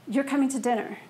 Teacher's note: I don't have to do the rising intonation in order for you to hear it as a question